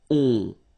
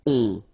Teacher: Okay, and then this O-N, so it's a nasal and it goes in your nose and it goes like on, all right? So you don't hear any N, so it's really on